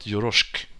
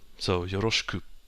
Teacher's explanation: notice the U doesn't disappear. It's not yoroshik.